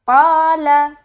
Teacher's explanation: लाम को हम बारीक अदा करेंगे। लाम बारीक हरफ है और इसको जल्द छोड़ेंगे क्योंकि इसके ऊपर क्या है?